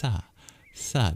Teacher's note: the S is truly a dental sibilant and you should put your tongue next to your teeth to pronounce that sound